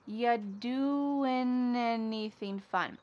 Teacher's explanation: We link together doing because we're going to drop the G. It ends with the sound n, the N sound.